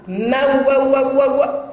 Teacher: كلمة موز ليس بها مد بالواو بل الواو تنطق